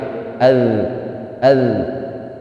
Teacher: dalal ini memiliki sifat rakhawah jadi dia bukan syiddah sifatnya jadi penekanan pada makhrajnya itu tidak boleh kuat tetapi harus pelan-pelan sehingga masih ada suara yang mengalir